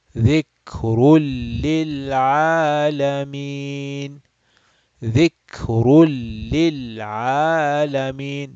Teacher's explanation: We are going to again skip the noon sound. And this ra is going to go straight into lam.